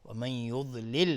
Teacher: ضاد از حروف استعلاء غلیظ طرف میشه